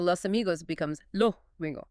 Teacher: It's a process called debuccalization. The final S on a word isn't pronounced crisply. It's softened into an aspirated H sound or dropped entirely.